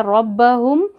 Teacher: अब नून है, एक हरकत पढ़ेंगे, रॉ को मोटा पढ़ेंगे, रॉ के ऊपर ज़बर आ गया तो रॉ मोटा पढ़ेंगे।